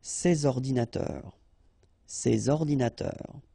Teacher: you should make the liaison between S and O